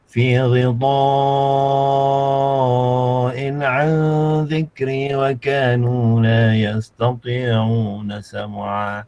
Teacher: Jadi mad wajib muttasil kena baca 5 harakat. Okay, 5 ataupun 6 harakat.